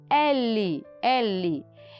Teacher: Eu tenho o movimento do músculo da língua com os alvéolos, a região próxima ao céu da boca.